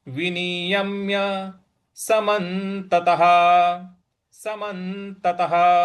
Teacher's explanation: जो विसर्ग है उसके आगे कुछ नहीं है, तो उसका उच्चारण ह करेंगे